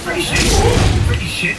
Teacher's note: There's like a glottal stop all of a sudden.